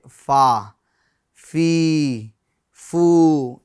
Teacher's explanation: ऊपर के दांतों का किनारा और निचले होठ का तर हिस्सा मिलने से फादा होता है।